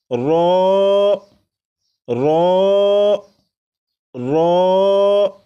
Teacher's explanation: را کو 1 الف کے برابر کھینچ کر پڑھیں گے